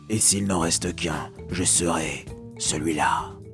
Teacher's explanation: Mais vous remarquez que je serai 3 syllabes, une mesure de 3 syllabes, celui-là une mesure de 3 syllabes. Du coup, on a un ralentissement à la fin du vers, ce qui crée cet effet plein de panache, on dirait badass aujourd'hui, de la fin.